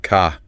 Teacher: But then you listen to someone from, say, Southern England or often from Australia, and that final R, it just vanishes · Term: Non-rodic, Non-rhotic